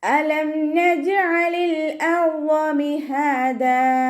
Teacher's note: അലം ഹംസയുടെ മഖ്റജ് അഖ്സൽ ഹൽക്ക്. Sound clear ആക്കിയിട്ട് തന്നെ ഉച്ചരിക്കാൻ ശ്രദ്ധിക്കുക.